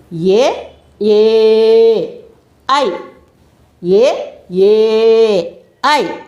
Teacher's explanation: కంఠం నుంచి దవడల ద్వారా నుంచి మనం ఆ అక్షరాలని పలకబడతాం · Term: కంఠ తాలవ్యాలు